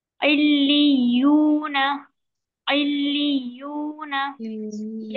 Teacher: لام والا جو لام ہے जो हरूफ लाम है उसे आइन से मिलाएंगे, फिर लाम को या से मिलाएंगे, फिर या को वाव से मिलाएंगे, यानी डबल सख्ती से अदा करेंगे हम।